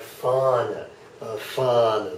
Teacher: the H is only serving to lengthen the A.